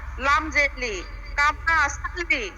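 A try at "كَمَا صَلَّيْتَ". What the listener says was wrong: কামা সালিন, লাম দুই জেলিন। এই সিন হবে কেন? এটা তো সা, আপনি সিন বলতেছেন কেন? এটা সা না?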